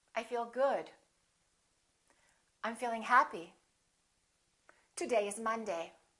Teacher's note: making sure that your voice goes down at the end, that your pitch goes down